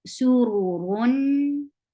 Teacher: Make sure you make ra heavy. Urun, and give the tawassut because you are pronouncing tanween, because the second dhamma is actual noon sakin.